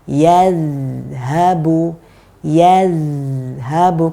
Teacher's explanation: Huruf dzal ketika sukun dia punya aliran yang paling panjang. Jadi harus kita panjangkan.